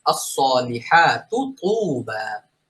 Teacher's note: প্রথমে তাটা পাতলা, পরে তুবা এই তটা মোটা হবে।